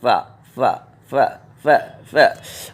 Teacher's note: اوپر کے دانت نیچے کے ہونٹ سے ملیں گے